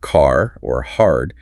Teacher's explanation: The r sound is pronounced clearly after vowels. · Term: rotic r, rhotic R